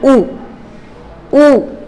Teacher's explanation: वृत्त आप जानते हैं, व्रत माने मुख का व्रत बन जाना, गोल बन जाना, सॉरी ओंठों का, जो ओंठ हैं आपके वो कैसे बन जाएंगे, वृत्तकार में बन जाएंगे, माने गोल हो जाएंगे।